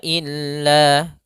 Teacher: adanya fathah bertemu dengan alif panjangnya dua harakat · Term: Mad thaabi'i